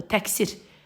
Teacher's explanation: Ondan sonra kar samit gəldiyi üçün tələffüzümüz bizim k olmalıdır.